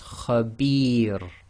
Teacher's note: it's preceded by the long vowel kasra ya, it will be light